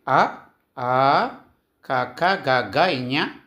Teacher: కంఠయములు అంటే కంఠము నుండి పుట్టినవి